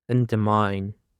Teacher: Endermine. Endermine consists of three syllables and the stress is on the last syllable. Undermine.